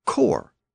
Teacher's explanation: both words are still spelled with an S but the pronunciation of the S was lost in core